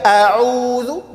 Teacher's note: huruf ain berubah menjadi huruf hamzah